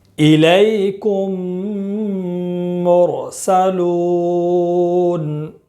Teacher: میم ساکن کے بعد اگر دوسرا میم آئے تو میم کو میم سے ملا کر غنہ کے ساتھ پڑھیں گے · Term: ادغام شفوی